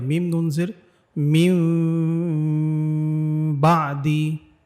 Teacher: ঠোঁটটাকে পুরোপুরি লাগাবো না, হ্যাঁ, একটু ফাঁকা রেখে ঝিরঝির একটা আওয়াজ করাবো। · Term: ইকলাব